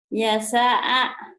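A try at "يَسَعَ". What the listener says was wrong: Nggak ada yang panjang.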